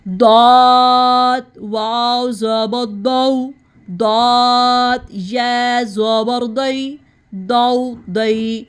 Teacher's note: اب دعات کو ہم نے زبان کے حافہ سے ادا کرنا ہے. زبان کی سائڈ اوپر داڑوں کی جڑ سے لگانی ہے اور اس کو بہت ہیوی ساؤنڈ میں پڑھیں گے ہم